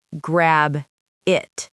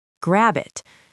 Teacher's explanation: It is not grab it. The B slides right over into the I.